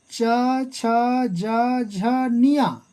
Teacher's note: च, छ, ज, झ, निया ये पांचों ही तालव्य व्यंजन कहलाते हैं, इसलिए च और छ तालव्य व्यंजन वर्ण हैं।